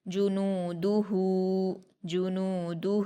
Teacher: ہا پر الٹا پیش ہے، اس کو ہم واو مدہ کی طرح 2 حرکات کھینچ کر پڑھیں گے۔